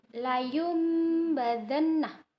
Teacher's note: nun sukun bertemu dengan ba, tapi seakan-akan bukan nun sukun yang bertemu dengan ba, tetapi mim. Jadi kita harus mengganti. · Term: iqlab